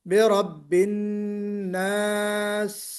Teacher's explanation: تو سیٹی بھی بجے اور تھوڑی سی آواز میں استمراریت بھی ہو، کنٹینیویشن ہو، برب الناس۔ تو صفیر کی وجہ سے سیٹی بھی ہو اور ہمس کی وجہ سے کنٹینیویشن آف ساؤنڈ جو ہے وہ بھی ہونا چاہیے